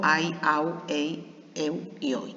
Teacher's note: una vocal abierta más una vocal cerrada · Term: diptongo